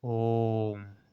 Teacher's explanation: हस्व स्वर से ती गुना समय लगता है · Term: प्लुत स्वर